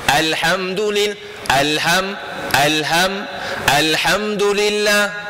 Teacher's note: lam yang mati tu tuan jangan ditahan suara pada huruf lam yang mati